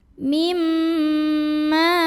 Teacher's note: Ma mad tabi'i karena ada alif yang didahului fathah, maka dibacanya panjang mimnya 2 harokat.